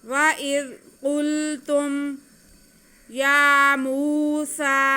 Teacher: क़ाफ हरूफ़ मुस्तालिया में से इसे मोटा करके पढ़ेंगे और आगे लाम साकिन है, क़ाफ का पेश हम लाम के साथ मिलाएंगे और ता पे पेश और मीम साकिन है, ता का पेश हम मीम के साथ मिला लेंगे, लेकिन खींचना किसी को भी नहीं है।